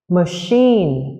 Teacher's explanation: Danh từ này mặc dù là danh từ nhưng lại có trọng âm rơi vào âm tiết thứ hai